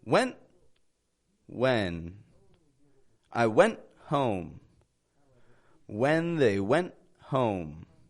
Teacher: notice I'm not releasing the T on the word went neither am I pronouncing that n very long it's actually short and kind of quick